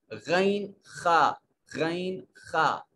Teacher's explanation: اب جب غین اور خا کو پڑھنے لگتے ہیں تو یوں لگتا ہے کہ جیسے آواز حلق کے ساتھ ٹکرا کر رگڑ کھا کر نکل رہی ہے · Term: ادنا حلق